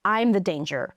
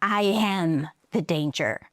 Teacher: But he wants to put emphasis on the fact on him being the danger. So, he stresses am.